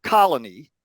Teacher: look at uh short vowels if we take the word colony that second vowel is reduced so instead of a full o it's actually coming out as uh and it's relatively short